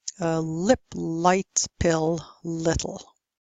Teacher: in American English you only use the dark L in any situation